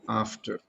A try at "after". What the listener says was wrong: F should be pronounced. F should